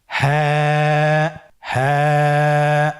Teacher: হ্যাঁ হরফটি উচ্চারণের স্থান কণ্ঠনালীর শুরু হতে, অথবা আমরা যদি আরবিতে বলি হলকের শুরু হতে এটা এই হরফটি উচ্চারিত হয়। · হাফটি উচ্চারণের ক্ষেত্রে অবশ্যই বারিক হবে এবং এক আলিফ টেনে পড়তে হবে